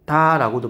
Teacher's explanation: 두 개의 모음이 합쳐져서 하나의 모음으로 발음되는 현상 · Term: 모음 축약